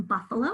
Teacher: The second syllable has a schwa spelled with an A. Buff, we hear the short U sound, and low, we hear the long O sound, but in that middle one, buffalo, that's our schwa sound.